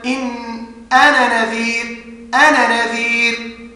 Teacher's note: لم يفصل بين النون الثانيه والنون الاولى فاصل في النطق